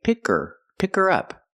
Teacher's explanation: you don't hear the H because the word her is not stressed